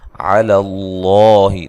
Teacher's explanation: و مدہ ہے، قاف کو موٹا ادا کرنا ہے، علی اللہ، لفظ اللہ کو موٹا ادا کرنا ہے، اس سے پہلے حرف پر زبر یا پیش ہو تو لفظ اللہ کو موٹا ادا کیا جاتا ہے